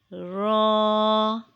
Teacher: It is pronounced when the back part of the tongue touches the upper gums of the top front four teeth.